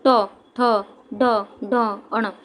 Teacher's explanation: हमें ट वर्ग बोलते समय जहाँ भी हवा रुकी उस जगह को ही हम मूर्धन्य कहते हैं। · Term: मूर्धन्य व्यंजन